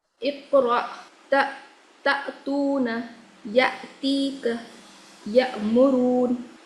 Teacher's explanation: جی اقرأ تأتون يأتيك يأمرون اس میں دیکھیے حمزہ ساکنہ ہے، اوپر قاعدہ بتایا تھا پچھلے ہفتے. حمزہ ساکنہ کے پڑھنے میں جھٹکا ہوگا، تو اس یس میں حمزہ کو جھٹکے سے پڑھا جائے گا.